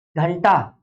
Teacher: हाँ, चा नहीं है, अनुस्वार से नासिका, यानी नासिका अनुस्वार से, नासिका अनुस्वार से। तो अनुस्वार का उच्चारण स्थान क्या हो जाएगा? नासिका।